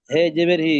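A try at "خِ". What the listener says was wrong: হে নয়, হে নয়, খ, খ, খজের খি।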